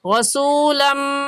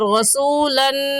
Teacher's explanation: اس تنوین کو اگلے لفظ کے ساتھ ملا کر پڑھیں گے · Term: ادغام